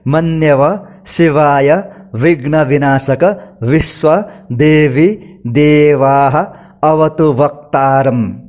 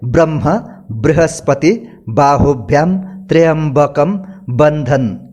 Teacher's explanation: ठीक इसी प्रकार व का उच्चारण में भी व्यवहारिकता के हिसाब से कभी हवा का स्पर्श से व और कभी ओष्ठ और दंत का सीधा स्पर्श से व उच्चारित होता है। खास करके दांत और ओष्ठ जोड़कर व बोलना और दोनों होठों को जोड़कर ब बोलना बहुत फर्क होता है। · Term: दंतोष्ठ